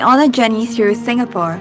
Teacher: she says Singapore with an r in a more American style